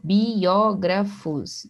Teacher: o som do I, o som do O ficam em sílabas separadas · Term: hiato